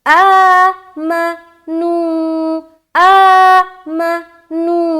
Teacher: آ کو ہم ذرا کھینچ کے پڑھ رہے, میم کو ہم ذرا جلد ادا کر رہے